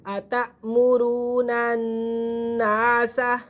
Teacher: نون کو نون کے ساتھ ملائیں گے کیونکہ اگلا نون مشدد اور مشدد حرف اپنے پہلے والے حرف کے ساتھ مل کر پڑھا جاتا ہے، اور واو ساکن سے پہلے پیش ہے، یہ واو مدہ ہے۔